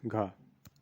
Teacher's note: कंठ महाप्राण घोष व्यंजन का उदाहरण है